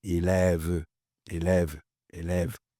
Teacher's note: una E de sonrisa, una E abierta y una de vómito